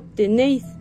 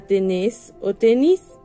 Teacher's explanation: tiende a simplificar el diptongo en las formas verbales